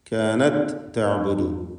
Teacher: വസദ്ദഹ മാ കാനത്, കാനത് തഅബുദു, താ ശേഷം താവും, താഇനെ തായിൽ പൂർണ്ണമായും ലയിപ്പിച്ച് ഒറ്റ ശബ്ദുള്ള താ ആക്കി ഉച്ചരിക്കുകയാണ് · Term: ഇദ്ഗാമുൽ മിസ്ലൈൻ സഗീർ